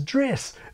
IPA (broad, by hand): dres